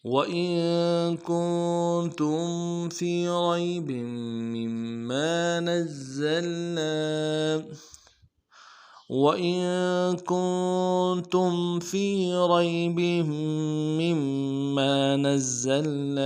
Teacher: وَإِن تم میں بھی غنہ کریں گے، نون ساکن ہے آگے، تم میں میم ساکن ہے، دونوں میں غنہ کریں گے